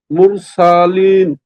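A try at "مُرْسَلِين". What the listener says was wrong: রটাকে আরেকটু মোটা করেন, মুর মুর। এই রটা মোটা কেন হবে বুঝতে পারছেন? কেন?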